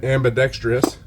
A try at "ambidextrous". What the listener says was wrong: You're putting an extra syllable. It's ambidextrous.